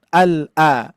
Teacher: harus jelas hamzanya ya, pangkal tenggorokan